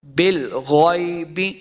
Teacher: غین کو بھی پر پڑھیں گے، موٹا کر کے پڑھنا ہے. غین حرف مستعلیہ سے ہے.